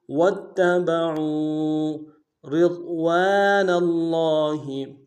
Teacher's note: را کو باریک ادا کریں گے، ضاد کو موٹا ادا کریں گے · عین کو موٹا ادا کرتے ہوئے واو کے ساتھ ملانا ہے ، واو مدہ ایک الف دال میں کھینچیں گے۔ واتبعوا رضوان